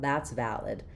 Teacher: in valid, our stress is on the first syllable vow, which means we have the clear a vowel like in cat